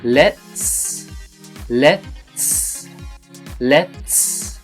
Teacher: And this is a secret with the TS at the end. Do the T, let, but don't do a final T sound. Just go let, and then do the S. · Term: T stop